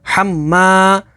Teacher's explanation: میم کے اوپر تشدید ہے تو تشدید والے حرف کو 2 دفعہ پڑھیں گے. الف سے پہلے زبر ہے تو الف مدہ ہوگی.